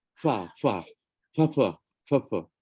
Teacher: kebanyakan kawan-kawan di utara kita ni pakai huruf Fa ni dia pakai dua bibir sebut Fa Tapi pakai dua Bib jadi fa fa fa so